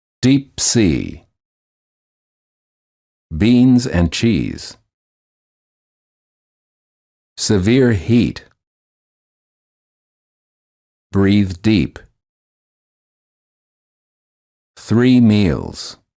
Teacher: The lips are slightly smiling, tense, and not rounded, and the tongue is tense. It is high and far forward near the roof of the mouth. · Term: E as in meet